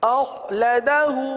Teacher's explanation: آخر میں ہاں ہے، الٹا پیش ہے، ایک الف تک کھینچ کے پڑھیں گے